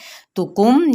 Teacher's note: یہاں پہ بھی اظہار شفوی کا قاعدہ ہے کیونکہ میم شفتان میں سے ہے